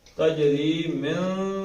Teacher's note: نون کو ناک سے ادا کرنا ہے، زبان تالو سے نہ لگے